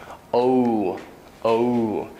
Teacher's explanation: the long O is really, it's a double vowel also. It's a blended vowel.